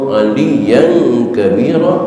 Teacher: Tanwin ketemu kaf ikhfa ab'ad. Suaranya jauh.